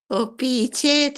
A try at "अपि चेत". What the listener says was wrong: আপি অপি নয় আপি চেত আ এর উচ্চারণ ও নয় अपि चेत सुदुराचार अपि अपि चेत अपि चेत सुदुराचार